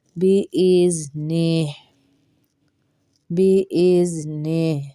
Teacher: بإذنہ میں ہا کی آواز بھی آئے گی، لیکن اس کو متحرک نہیں پڑھیں گے، ساکن کر کے پڑھیں گے